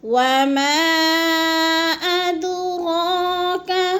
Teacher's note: وما ادراک، وما کو بھی تھوڑا سا ہم نے لمبا کرنا ہے کیونکہ ادھر مد منفصل ہے، 4 الفی مد ہے، 4 الف کے برابر ہم نے کھینچنا ہے اس کو